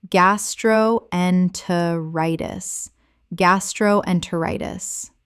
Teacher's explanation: Correct pronunciation, gas-tro-en-ter-i-tis. Six syllables with the stress falling on the fifth.